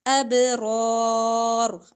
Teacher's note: با پر کلکلا را اور را موٹے پڑے جائیں گے